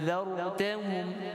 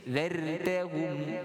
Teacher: Ra dibaca dengan tafkhim, baca tebal.